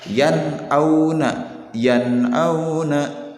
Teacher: Jadi nunnya dibaca dengan jelas, tidak dibaca panjang, tidak didengungkan, tidak pula dibaca atau bacaan nunnya itu dimasukkan ke huruf selanjutnya ya, tidak boleh seperti itu. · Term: huruf izhar